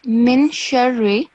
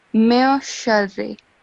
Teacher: So instead of min sharri, you have to, the sound of noon has to be silent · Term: ikhfa